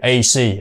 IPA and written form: eɪ si: (AC)